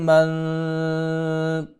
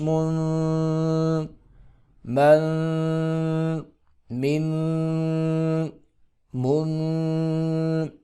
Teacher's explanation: میم 2 زبر من، یہ ناک میں آواز کو لے کر جانے کو اخفا کہتے ہیں، غنہ کہتے ہیں۔